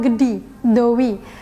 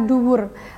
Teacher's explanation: dalam bahasa Jawa, terdapat bunyi I atau U diucapkan dengan durasi yang lebih panjang. Contohnya vokal I dalam kata gedi, dowi, dan kata U dalam kata duwur. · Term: vokal panjang